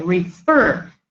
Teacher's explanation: the stress falls on the second syllable we say refer